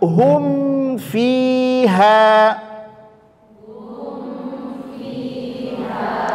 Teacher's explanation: disebabkan karena dekatnya makhraj mim dengan Fa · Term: izhar syafawi